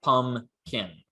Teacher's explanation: to a velar consonant so this also undergoes assimilation so that it is also a velar nasal followed by a velar stop